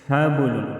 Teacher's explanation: हबलुन, बा साकिन होगा, बा साकिन है तो इसमें हम कलकला करेंगे।